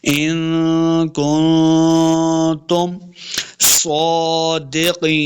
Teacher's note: اور نون ساکن کے بعد تا ہے تو یہاں پہ بھی اخفاء کریں گے، یعنی غنہ کر کے پڑھیں گے ، ان کنتم صادقین، صاد کو موٹا پڑھنا ہے، حروف مستعلیہ